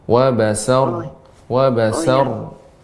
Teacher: rohnya tebal dan sedikit mengalir